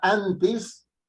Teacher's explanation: Antes, entonces tengo 2 sílabas, an y tes. Y entonces an está en la penúltima con la mayor fuerza de voz, es una palabra grave